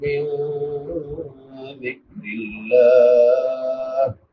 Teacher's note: نون ساکن کے بعد حروف اخفاء میں سے دال ہے تو یہاں پہ اخفاء ہوگا اور لفظ اللہ سے پہلے زیر ہے تو اس کو باریک پڑھے گا.